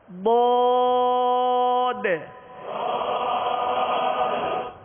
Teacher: یہ آخر میں جو آواز ہے یہ دال ہے، آگے دال ساکن ہے تو ہم قلقلہ کر رہے ہیں